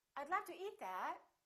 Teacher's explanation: with my intonation going up with the pitch going up it sounds like something else is coming like i'm not finished speaking